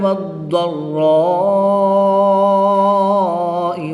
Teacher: را مشدد پر زبر ہے تو اس کو بھی پورا یعنی موٹا پڑھیں گے۔ الف مدہ کے بعد حمزہ اسی کلمے میں ہے تو یہاں پر مد متصل ہوگی، 3 سے 5 الف تک کھینچ کر پڑھیں گے۔